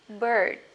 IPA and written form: bɜːd (bird)